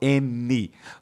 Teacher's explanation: Como é que eu vou falar, ó, o N, tá vendo a língua, ó, N. A língua toca o céu da boca e a minha boca não fecha.